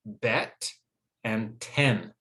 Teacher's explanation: the short e sound is higher up okay in the mouth but it's still near the front of the mouth